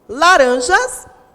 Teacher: Quando eu digo laranjas, a sílaba mais forte é o ran